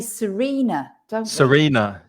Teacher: Serena, you've got more to come because your voice goes up at the end.